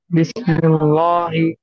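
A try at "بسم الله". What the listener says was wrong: نہیں، لام باریک پڑھیے. تھوڑا پیچھے. بسم اللہ، ایسا.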